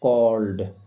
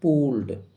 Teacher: ল sound এরপরে ইডি রয়েছে, তাই এই ইডি এর উচ্চারণ হবে ড এর মতো